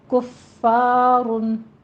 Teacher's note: فا کے اوپر تشدید ہے، فا میں ہمس بھی آئے گی، سختی بھی کرنی ہے